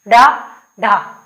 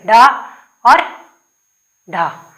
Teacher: जो जीभ है पहले तो उठ के मूर्धा को स्पर्श करेगी और फिर क्या होगा? नीचे झटके से आएगी, डा, ढा। तो हमारी जीभ कहाँ वो टच हो रही है? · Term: उत्क्षिप्त व्यंजन